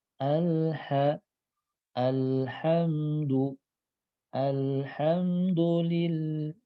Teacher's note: Jadi ketika lam sukunnya diucapkan terasa ada suara lam sedikit mengalir, langsung nyambung dengan ha.